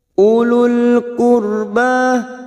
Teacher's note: ro sukun yang didahului duma kita baca tafkim